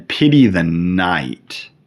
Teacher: two stressed syllables surrounding two unstressed syllables. Da da da da.